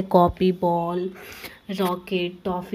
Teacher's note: जैसे भी हम बोले थे इसका प्रयोग अंग्रेजी भाषा में आए कुछ शब्दों से ही होता है, जैसे कॉपी, बॉल, रॉकेट, टॉफी, ये सब अंग्रेजी भाषा के शब्द हैं। इनका उच्चारण आ तथा ओ के बीच क्या होता है